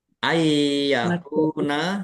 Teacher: nun sukun bertemu dengan huruf ya. Idgham bighunah. Masuk dengan mendengung. Yaitu mendengung ya.